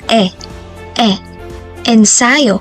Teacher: ang patinig na e naman ay nabibilang sa paharap na pagitna na posisyon na bahagi ng dila